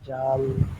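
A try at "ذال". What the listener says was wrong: জাল না, এটা নরম হবে ফায়ের মতন। জ্যাল, জিব্বার আগাটা দিয়ে সামনে, জ্যাল।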